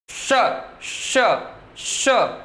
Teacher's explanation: बोलना ये वाला स है, पर इसको बोलने के दौरान आपको अपने जीभ को तालू से जाकर चिपका देना है। श, तो इसको इसीलिए तो चूंकि इसको बोलने के लिए जीभ तालू से जाकर के चिपकती है, तो तालू की मदद से ये बोला जाता है, इसलिए इसका नाम तालव्य श रखा गया।